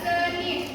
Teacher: Vokal E seperti pada seni adalah vokal sedang dan depan